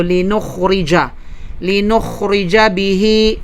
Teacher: ang ra dito, may mapapansin natin dyan, walang kulay kundi manipis kasapagkat kasra ang kanyang haraka. So linukhrija bihi.